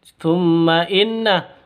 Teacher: [Musik] in tumma inna mim tasydid ghunah musyaddadah mim tasydid cara bacanya dengung ghunah musyaddadah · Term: gunnah musyaddadah